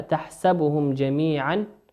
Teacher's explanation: الميم في كلمة تحسبهم ميم ساكنة أتى بعدها حرف الجيم، والجيم من حروف الإظهار